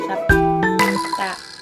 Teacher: bunyi P muncul di tengah dan tidak diucapkan dengan lepas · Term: ditahan